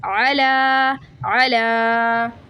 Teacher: اور اس پہ جب ہم وقف کریں گے تو کیا ہوگا، جو کھڑی حرکات ہے نا اس پہ اگر ہم وقف کریں گے کھڑا زبر پہ، تو کھڑا زبر جیسے کہ 2 سیکنڈ کے لیے کھینچا جاتا ہے تو وقف میں 3 سیکنڈ کے لیے کھینچا جائے گا